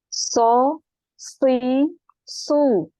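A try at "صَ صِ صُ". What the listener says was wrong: So, dinaikkan juga permukaan lidahnya ya, biar lebih tebal lagi. So, si, su. Naik lagi. Coba naik lagi permukaan lidah. Ini pangkalnya udah, tinggal permukaan lidahnya juga dinaikkan. So.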